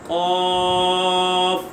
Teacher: قاف مد لازم کھینچ کے پڑھیں گے، قاف، اور اس کو موٹا پڑھیں گے